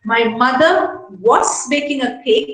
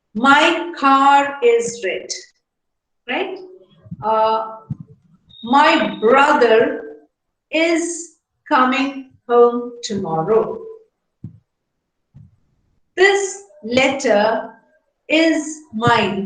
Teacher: When you have something followed, when you have a word ending in R followed by a vowel sound, then the R is pronounced. So the R acts as a link between the words to ease pronunciation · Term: linking R